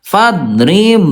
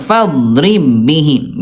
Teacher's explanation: Cuma dilebur doang tanpa ditahan.